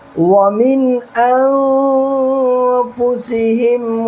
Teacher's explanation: نون ساکن کے بعد حروف حلقی کے 6 حرفوں میں سے حمزہ آ رہا ہے، یہاں پر نون کو ظاہر کرنا ہے. اور اس نون کے بعد حروف اخفا کے 15 حرفوں میں سے فا آ رہا ہے، یہاں پر نون کے بعد کو ناک میں چھپانا ہے.